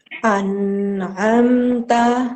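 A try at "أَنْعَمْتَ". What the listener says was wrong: Nunnya jangan terlalu panjang. Sedikit saja, Bun. Satu anggukan kepala saja. An'amta.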